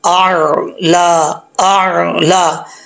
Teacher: پہلے حمزہ کا ساؤنڈ، حمزہ کی آواز، پھر عین کا ساؤنڈ یعنی عین کی آواز، اعلی، اعلی۔ حمزہ کی آواز سخت ہے، عین کی آواز نرم، پہلے سختی سے پھر عین